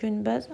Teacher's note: Günbəz sözündə də N ilə yazılır. M ilə deyilir.